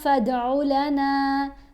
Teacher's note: دال کے اوپر کلکلا کیا، نون کو تھوڑا سا لمبا کر کے پڑھا کیونکہ حرف مدہ ہے